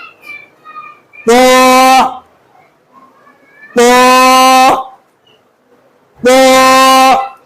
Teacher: এই হরফটির নামে শুদ্ধ উচ্চারণ করতে হলে জিহ্বার আগা সামনের উপরের দুই দাঁতের গোড়ার সঙ্গে লেগে মোটা আওয়াজে উচ্চারণ হবে।